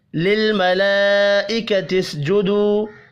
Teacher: بڑی مد کو 5 الف کے برابر کھینچ کر پڑھنا ہے